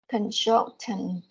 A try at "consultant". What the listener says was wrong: Consultant. Yeah, the S here pronounced as Z, not S. It's consultant.